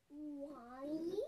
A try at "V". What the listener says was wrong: No, that's not Y. It's a V. V, victory. V.